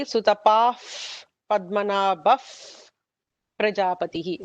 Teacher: Sutapa followed by Pa gives an F kind of a sound.